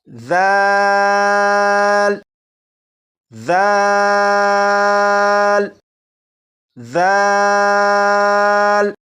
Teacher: जबान की नोक ऊपर के सामने के दो दांतों के सिरे से लगाकर पढ़ें तो सीडी की आवाज खत्म हो जाएगी।